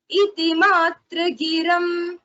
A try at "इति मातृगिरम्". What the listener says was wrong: Don't say matrugiram. That takara should not have dvitva. It says matru.